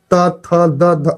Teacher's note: जीभ जो है दांत पर चटेगा सट जाएगा तो इसको जैसे कि हम लोग दंत बोलेंगे